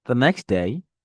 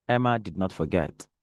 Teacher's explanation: I said Emma did not forget falling tone but the next day rising tone